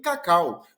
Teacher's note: decrescente, que é o encontro da vogal mais a semivogal, nesta ordem, na mesma sílaba